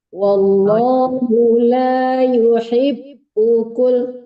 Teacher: Jangan ditahan di bu karena bunya nggak panjang